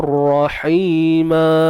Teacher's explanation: Ra pun nak tebal dia, angkat pangkal lidah lah.